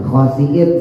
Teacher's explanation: sinnya tipis. Ujung lidah taruh bawah antara gusi bawah sama gigi bawah.